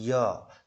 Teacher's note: जीभ और तालु के ऊपर के बीच के हिस्से से वायु का प्रवाह हो रहा है, और वायु का जो प्रभाव पड़ रहा है वो हमारे तालु यानी जीभ के ऊपर वाले हिस्से से पे पड़ रहा है। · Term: तालुस